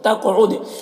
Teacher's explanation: قاف کو پر پڑھیں گے، یہ حروف مستعلیہ میں سے، اور قاف میں قلقلہ ہوگا، عد میں دال میں قلقلہ میں بھی دال میں قلقلہ ہوگا۔